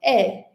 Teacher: Então, nós temos esse símbolo aqui, sempre representa o som e esse aqui o som e. Então, o som é aquele que a boca é mais aberta, os lábios um pouco mais esticados, é a língua numa posição média, nem completamente abaixada e nem levantada.